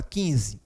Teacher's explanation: porque você escuta a letra U quando você fala 15 não você não escuta a letra U então é como se fosse o som de uma única letra